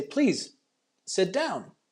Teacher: sit is a short a sound and it's open